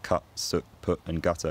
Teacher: the vowels in foot and strut haven't split away from each other so words like cut put and gutter all have the same stressed vowel and the quality is probably something like oh although that will